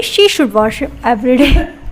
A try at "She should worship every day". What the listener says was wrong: नहीं वो should और worship एक हो जाएगा.